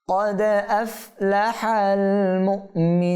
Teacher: এটা হামজা সাকিন হওয়ার কারণে এখানে ধাক্কা হবে